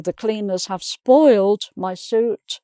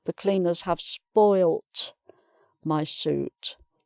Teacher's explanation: no change of the vowel, there; just one l for both, but the d and the t are what change